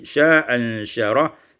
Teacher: Pada ayat yang ke-22 sya'an syarah isqatul hamzatil ula dibuang hamzah yang pertama menjadi sya'an syarah.